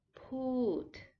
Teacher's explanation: be next to say put put is a falling tone put you start higher and then you go lower